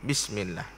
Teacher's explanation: Nipis sebutannya. Maka tiada penuh mulut. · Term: tarqiq